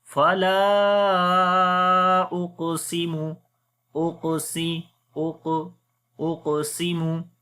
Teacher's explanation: We long 3 to 4 seconds. On the qaf, we read heavy sound, and then also we make qalqala, which is the weak qalqala.